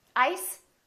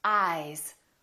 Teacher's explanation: This S is actually pronounced as a Z sound. This is actually Z, Z.